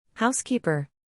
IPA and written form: ˈhaʊsˌkiː.pər (Housekeeper)